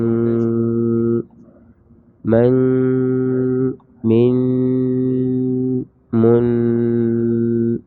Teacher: یہ جو آواز آ رہی ہے ناک سے، یہ غنے کی ہے، جو 1 الف کے مقدار کے برابر کیا جا رہا ہے۔